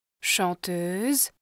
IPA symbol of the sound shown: ø œ